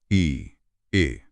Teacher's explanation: और ये चारों ही अग्र स्वर हैं। आप इ या ए बोलेंगे तो जीभ का अगला हिस्सा ऊपर उठेगा। · आप ई या ए बोलेंगे तो जीभ का अगला हिस्सा ऊपर उठेगा। ई, ए। हाँ, सारा फोकस सामने के दांतों के पीछे है।